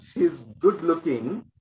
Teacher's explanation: The stress is on this looking element